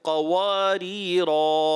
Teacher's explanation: قاف موٹا، قوا اور ہونٹ گول ہو جائے